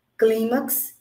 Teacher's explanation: Foi mais forte o cli, então eu pude acentuar.